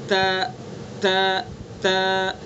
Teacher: جب ہم زبان کی نوک کو ثنا علیا کی جڑ پر لگائیں گے تو اس کا صحیح تلفظ ہوگا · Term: تا کا مخرج